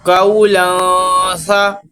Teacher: تنوین کے بعد حروف اخفا میں سے سا آیا تو ادھر اخفا کا قاعدہ ہوا ہے، غنہ کر کے پڑھیں گے